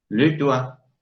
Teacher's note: en este caso constatamos que la T final no se pronuncia